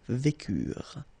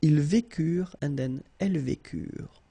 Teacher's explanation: ent is not pronounced phonetically, you don't get it, so vécure